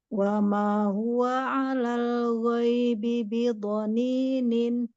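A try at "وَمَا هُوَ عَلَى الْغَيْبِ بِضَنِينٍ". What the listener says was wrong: Cantik, lanjut.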